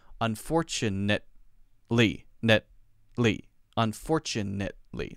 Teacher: we don't usually say net ly we say net with a stop